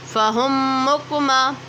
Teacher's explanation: دیکھیں فہم، ہا ایک تو موٹا ہے، اس کو ہا نہیں ہا پڑھیں گے۔ میم ساکن کے بعد دوسری میم آ رہی ہے تو ادغام شفوی ہوگا